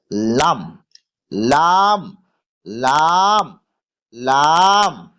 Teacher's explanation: জিভের আগার কিনারা সামনের ওপরের দুই পাশের দাঁতের গোড়ার সাথে লাগিয়ে, দুই দিকেই।